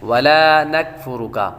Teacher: نون کے بعد کاف بھی باریک ہے، اور آگے فا کے بعد را پر پیش ہے، را کو پر پڑھیں گے، اور آخر میں کاف پھر باریک ہے۔